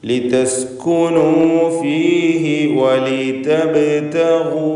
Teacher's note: ഗൈനിൻ്റെ ഉച്ചാരണം തടിപ്പിച്ച് തഫ്ഖീമോട് കൂടിയാവണം. നിസ്ബിയായ തഫ്ഖീമാണ് ഗൈനിനുണ്ടാവുക, ഗൈനിന് ദമ്മാണ് എന്നതുകൊണ്ട്.